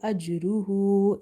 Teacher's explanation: jim is again from qalqala letters, but we have weak qalqala because of jim being placed in between somewhere in the word